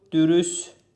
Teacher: Deməli, təmizlikdə el D'yə keçdi, K xıştrika 2 fərqli məqam var. Dürüstlükdə T düşdü, el D'yə keçdi, K xıştrika 3 fərqli məqam oldu.